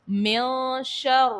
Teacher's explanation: رو کے نیچے زیر ہے تو رو کو باریک پڑھیں گے